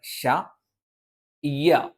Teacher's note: നാവിന്റെ മധ്യഭാഗത്തിന്റെ രണ്ട് സൈഡുകൾ മേലെ അണ്ണാക്കിൽ സ്പർശിക്കുകയും നാവിന്റെ മധ്യഭാഗം അല്പം കൊഴിഞ്ഞു നിൽക്കുകയും അതിലൂടെ കാറ്റ് സഞ്ചരിക്കുകയും ചെയ്യുന്ന ഒരു രീതിയാണ്